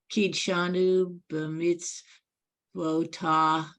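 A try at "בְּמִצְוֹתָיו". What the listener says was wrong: Almost. Then the next word is B'mitz Votav. Don't forget the last letter.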